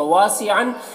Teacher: واو میں بھی الف مدہ ہے، ایک الف کے برابر کھینچیں گے۔